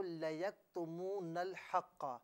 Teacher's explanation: جو لَيَكْتُمُونَ میں جو کاف ہے نا یہاں پر جنبش بالکل نہ دیجئے